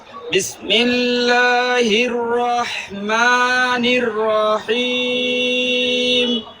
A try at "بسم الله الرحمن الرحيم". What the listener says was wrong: বিসমিল্লাহ না, বিসমিল্লাহ, সিনটাকে একটু ধরতে হবে।